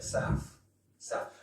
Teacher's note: whereas in cockney i'm putting an f there for south